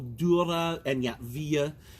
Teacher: that schwa is pronounced but it's always done a little softer than the others